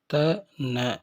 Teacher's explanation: த, ந இந்த இரு எழுத்துக்களையும் நுனிநாக்கினால் மேற்பல்லின் உட்புறத்தை பொருத்தி உச்சரிப்பதால் இவற்றை பல் ஒலிகள் என்பர்.